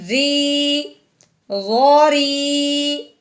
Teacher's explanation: رو کے نیچے زیر ہے، اب اپنے رو کو باریک پڑھنا ہے